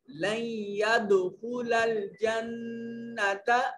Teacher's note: यद दाल पर कलकला करेंगे